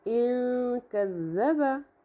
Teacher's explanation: یہاں پر آواز کو، نون کی آواز کو ناک میں چھپاتے ہوئے پڑھیں گے اور آدھا ادھورا غنہ ہوگا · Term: اخفا